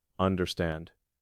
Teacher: The word understand stresses the last.